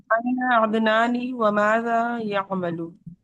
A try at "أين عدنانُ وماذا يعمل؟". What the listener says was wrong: عدنانی نہیں، عدنانو. زیر کی کوئی وجہ نہیں.